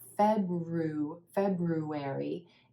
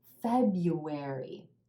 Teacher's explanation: emphasis on that first syllable